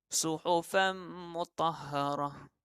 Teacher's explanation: nun mati dimasukkan ke dalam mim. Jadi seumpama tak ada. Seperti ini juga.